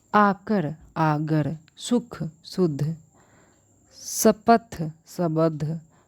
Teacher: अपभ्रंश में शब्द के मध्य में आने वाली क, ख, त, थ, प और फ ध्वनियाँ क्रमशः ग, घ, द, ध, ब और भ में बदल जाती है